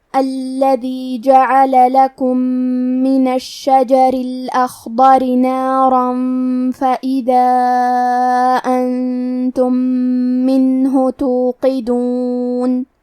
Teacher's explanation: کلمت توقدون میں حرف القاف کو موٹی آواز میں پڑھیں گے۔